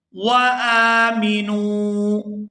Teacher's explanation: اعوذ باللہ من الشیطان الرجیم، بسم اللہ الرحمن الرحیم، وآمنوا بما انزلت، وآمنوا، یہاں حمزہ کے اوپر کھڑی زبر ہے تو اس کو کھینچ کر ادا کریں گے، اور آگے نون کو واو ساکن کے ساتھ ملائیں گے تو کھینچ کر ادا کریں گے، کیونکہ یہ واو مدہ ہے